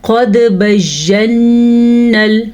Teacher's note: قد قاف موٹا پڑھنا ہے اور دال پہ کلکلا ہو رہا ہے